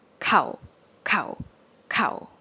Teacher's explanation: shorter cow but the same tone